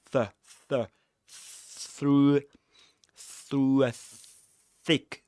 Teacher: there's no vibration in the vocal folds, so we call it voiceless, a voiceless consonant